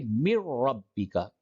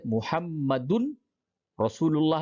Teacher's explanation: یہاں پہ محمدن رسول اللہ نہیں بلکہ محمدر، نون تنوین جو تھا اس کو را سے بدل دیا، را میں ادغام کر دیا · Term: ادغام بلا غنہ